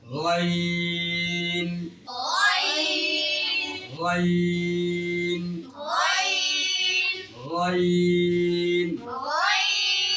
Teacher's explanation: এই হরফটির নামের শুদ্ধ উচ্চারণ করতে হলে কণ্ঠনালীর শেষ স্থান থেকে এই হরফটি উচ্চারণ হবে।